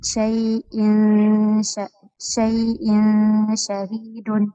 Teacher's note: حمزة تنوين بالكسر مخفى عند الشين المفتوحة بغنى حركتين